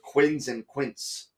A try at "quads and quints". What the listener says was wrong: Quads and quints. You said quints and quints, or quids and quints.